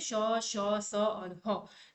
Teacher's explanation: वैसे तो ये ऊष्म व्यंजन कहलाते हैं जिनको बोलने में ऊष्मा निकलती है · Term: संघर्षी व्यंजन